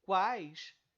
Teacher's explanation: nessa parte de palavra quais eu tenho apenas uma vogal as outras duas são semi vogais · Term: tritongo